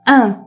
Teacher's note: orada nazal bir sesimiz var fark ettiyseniz an veya demiyorum. ın diyorum. Bu nazal ses başlangıçta zor gibi gelebiliyor ama zaman içerisinde çıkarmanız daha kolay olacaktır.